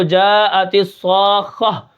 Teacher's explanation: ہے۔ اب یہاں پر اگر میں وقف کروں تو جاءت الصاخہ، آخر میں جو تا ہے وہ ہا کی شکل میں تبدیل ہو جائے گی ، اس تبدیل کرنے کو وقف بالابدال کہتے ہیں۔ اب وقف